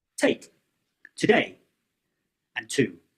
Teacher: you stop the airflow with your tongue at the ridge behind your teeth. The t sound is made through the mouth and it's unvoiced which means that you don't use your vocal cords to make the sound.